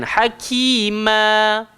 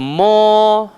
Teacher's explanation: So kita tak buka lah ma, kita tak baca mo.